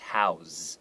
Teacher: house as a verb, it's usually pronounced house. Okay, there's like a Z sound.